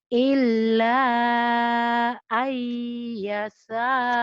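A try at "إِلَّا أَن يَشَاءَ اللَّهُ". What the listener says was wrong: Shinnya mana? Karena virus rehan tuh shinnya. Shin, ayo. Illa ayyasha Allah.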